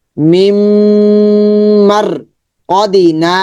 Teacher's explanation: নাটা লম্বা হবে, জবর পরে খালিফ মাদের হরফ